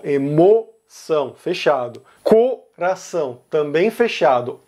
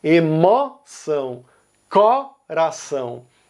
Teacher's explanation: É algo que a gente ainda não comentou até agora, mas se você escutar com atenção, você vai perceber que Rio Grande do Sul, São Paulo, Rio de Janeiro, Minas Gerais e Goiás pronunciam as palavras emoção e coração com o fechado